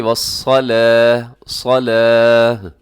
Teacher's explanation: لیکن اس میں صاد موٹا رکھنا ہے، لام کو موٹا نہیں کرنا